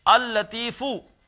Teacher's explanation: پڑھا ایک ہی لام جائے گا، ادغام ہو جائے گا، لیکن لکھا جائے گا اللطیف۔